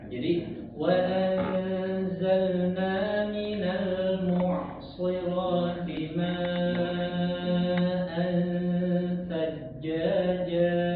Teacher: huruf ain, ya, usahakan suaranya jangan terhenti, jangan seperti huruf hamzah